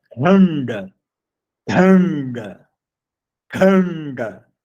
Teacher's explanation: Um D cerebral e um N cerebral.